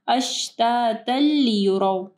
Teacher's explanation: तनवीन के बाद लाम है, इदगाम आ रहा है विदाउट गुन्ना, गुन्ना नहीं करना